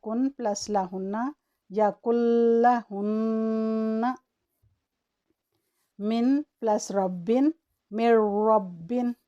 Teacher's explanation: تو جب نون ساکن یا تنوین کے بعد لام یا را آ جائے تو اس کو اس طرح ملایا جاتا ہے کہ نون کی آواز کلیاتاً ختم ہو جاتی ہے اور اس کے نتیجے میں لام یا را پر تشدید آ جاتی ہے، اور اس کو 1 سیکنڈ کا وقت دیتے ہوئے پڑھتے ہیں